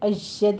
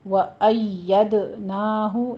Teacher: یا کی پر تشدید ادا کرنی ہے، دال کے پر قلقلہ کرنا ہے